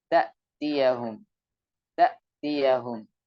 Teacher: ketika mengucapkan huruf hamzah, maka suara terputus, udara juga, nafas juga terhenti. Dan itu ketika sangat jelas ketika dia sukun.